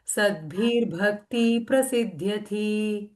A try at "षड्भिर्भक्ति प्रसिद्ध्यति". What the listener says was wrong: It's Shatbhir. Shad. It's not Sir. Shatbhir Bhakti Prasidhati.